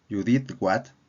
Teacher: el tono luego cambia a ascendente de la palabra what, indicando sorpresa o incredulidad por lo que se acaba de escuchar.